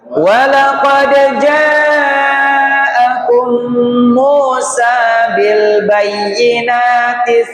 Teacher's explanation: Catatannya yang pertama qalqalah. Walaqad dal ba sama jim dipantulkannya kalau bisa maksimal